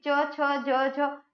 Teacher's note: जहां जीभ टच हो रही है वो तालु है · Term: तालव्य व्यंजन